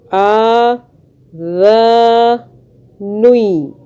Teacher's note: اس ذال کی آواز سیٹی کی آواز میں آپ نے نہیں نکالنی ہے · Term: ذال کو سافٹ